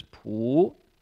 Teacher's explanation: that's the second tone, the rising tone